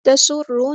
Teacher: را ہمارا یہاں پہ ہیوی لیٹر ہے اور شد والا حروف ہے تو اچھے سے واضح کر کے ادا کرنا ہے جماؤ کے ساتھ